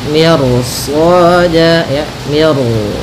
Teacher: di sini mi-nya tipis, ro-nya tebal. Nah, di sini namanya ro tafkhim.